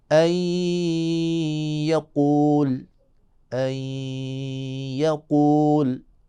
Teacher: نون ساکن کو یا میں ادغام کریں گے اور غنے کے ساتھ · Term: ادغام مع الغنہ